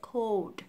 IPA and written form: koʊld (Cold)